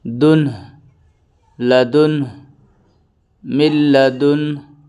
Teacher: من لدنہ، میم لام زیر مل، تشدید سے پہلے جزم والا حرف نہیں پڑھا جاتا۔ من لدنہ، ہا پہ وقف ہو رہا ہے، اس لیے ہا پہ سکون دے کے سانس توڑیں گے